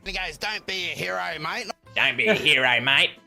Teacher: he takes his broad accent to another degree making it even more nasal when he's impersonating